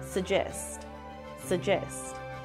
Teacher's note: as suggest suggest put stress on the second syllable suggest suggest notice that there is no proper G sound here just a j sound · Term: British English